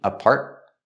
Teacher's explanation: with apartment, you have the T in the middle, is a stop T